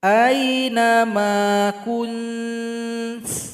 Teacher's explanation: ta itu kalau kita sukunkan ada bunyi hamas, bunyi nafas